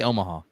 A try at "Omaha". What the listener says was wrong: it's not ahaha it's Omaha